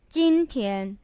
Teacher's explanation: 今, the first tone means today, and 天, also the first tone, means day or sky.